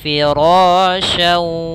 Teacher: Gunnah tadi menahan, mendengung. Maka kita masukkan dulu tanwinnya ke waw, baru kita gunnahkan. Maka firasyaw sambil ditahan 2 harakat. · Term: idgham bi gunnah